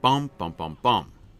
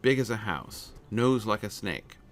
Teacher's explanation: Stress, and then 2 unstressed syllables, and then another stress syllable.